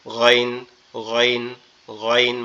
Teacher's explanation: গইনটা হচ্ছে আমাদের এই যে গালের মধ্যে থেকে, অর্থাৎ কণ্ঠনালীর শেষ অংশ, একবারে গলার সাথে মাথার যে অংশটা লেগে আছে এখান থেকে গইন গইন গইন, মনে হবে আওয়াজটা কি গালের ভিতর থেকে আসতেছে, মনে হবে আওয়াজটা গালের ভিতর থেকে আসতেছে, মানে গালের ভিতর থেকে, গলার ভিতর থেকে আসতেছে।